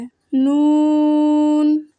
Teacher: जुबान के बारीक किनारे को ऊपर के दांतों के मसूड़ों से लगाकर बारीक आवाज में पढ़ें